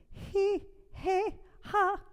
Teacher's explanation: aspirate, where the vocal folds are not quite together.